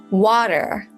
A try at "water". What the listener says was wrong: You don't mean water with a D, you mean water. Water. Water. May I have a little water, please? And notice I say all my consonants and vowels. I say water and not water. A Cockney from London will say water, water. It's a guttural stop where you actually stop the supply of air and it stops there. Water, water.